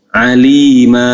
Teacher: kalau berhenti dia menjadi mad iwad namanya. Jadi dibaca dua harokat, alima, aliman jadi alima, basiron jadi basiro, dan seterusnya.